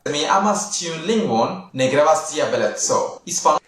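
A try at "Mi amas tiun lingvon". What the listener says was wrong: Also, he's not following the accent pattern of Esperanto.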